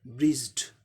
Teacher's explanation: ज भी voice sound है, इसीलिए क्या होगा, इन्फ्लेक्शन ईडी का उच्चारण क्या हो जाएगा, ड हो जाएगा